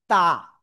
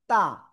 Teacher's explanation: জিহ্বার আগা উপরের দুই দাঁতের গোড়ায় লাগাবো